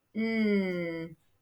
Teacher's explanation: Your teeth are a little bit open. N, and your tongue is touching the top of your mouth by your front teeth. My tongue is curled up when I make that sound. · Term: N sound